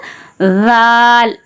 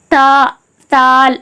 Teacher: வாயை கொஞ்சம் தறந்து அந்த நாக்கு வந்து வெளிய தெரியணும்